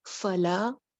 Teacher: ایک الف لمبا کرنا ہے لام کو، ف آواز چلتی ہوئی